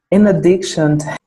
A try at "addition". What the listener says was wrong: addiction é vício. sem o C.